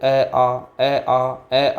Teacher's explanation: कंठ से आ रहा है तो कंठव्य होता है